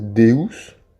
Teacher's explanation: Le E est généralement ouvert, jamais muet.